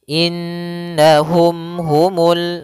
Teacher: Apabila ada mim mati bertemu dengan ha maka hukumnya kita hukumi dengan izhar syafawi maka mimnya tidak boleh ditahan gunahnya tidak boleh innahum atau innahum ya langsung saja innahum humul